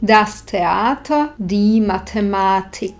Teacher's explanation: Tu má T jemnučký prídych. To znamená, akoby sme za T silnejšie vydýchli.